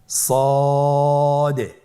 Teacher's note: জিহ্বার আগা সামনের নিচের দুই দাঁতের পেট ও আগার সঙ্গে লাগিয়ে উচ্চারিত হয়।